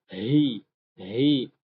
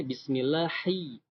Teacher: ha di sini harus keluar dari tenggorokan yang paling bawah dekat dada